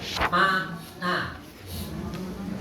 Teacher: Huruf yang masuk, yang keluar suaranya dari hidung hanya itu, ma sama na. Ketika kita mengucapkan mesti akan pindah ma, na. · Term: khaysum